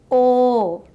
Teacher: It is a longer counterpart of short O. This sound is articulated in the same manner as O, but with a longer duration. It includes a slight glide towards O, which gives it a round and dynamic quality.